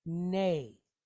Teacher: Then we have a Nun, and it's pointed Sere, long duration E type vowel with a Yud behind it. So this is going to sound like neigh